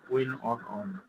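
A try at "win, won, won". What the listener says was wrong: উইন, অন, অন বলবো না, উইন, ওয়ান, ওয়ান, কি বলবো, ওয়ান, ওয়ান। আচ্ছা, আমরা 1 2 3 যেভাবে ওয়ান বলি সেই রকম ভাবে উচ্চারণ হবে ওয়ান।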